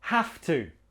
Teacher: pronunciation not have to with a V it's more like a f an F